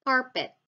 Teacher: The second variant is the sound or the allophone p in the word carpet, unaspirated.